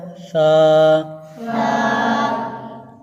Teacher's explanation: سا کا مخرج ہے کہ زبان کا سرا اور اوپر والے دانتوں کے اندرونی کنارے سے ادا ہوتا ہے